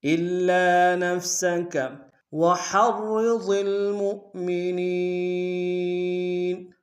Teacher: وحرض میں ہا کو گہرائی سے ادا کرتے ہیں، را کے سامنے لائیں گے، را کو موٹا ادا کریں گے، پہلی را موٹی ہوگی دوسری باریک ہوگی، واد کو موٹا ادا کریں گے، اور میم کو واو کے سامنے لائیں گے، یہ حمزہ بشکل واو ہے، جھٹکا دیں گے، اور نون کو یا کے سامنے لائیں گے، یا مدہ ایک ہندار میں کھینچیں گے۔